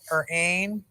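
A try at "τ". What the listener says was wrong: No, this is not ain. This is tay.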